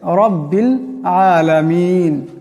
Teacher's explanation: রব্বিল এখানে রাকে মোটা আওয়াজে করতে হবে